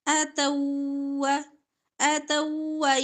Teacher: پہلے واو کو دوسرے واو کے ساتھ ملا کر پڑھیں گے